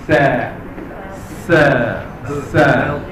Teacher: Bezakan antara sin dengan sad. Permulaan sebutan mesti bunyi sin yang nipis.